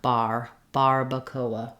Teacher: we would have just that back pulled back R we would change this second a to a schwa sound bar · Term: American R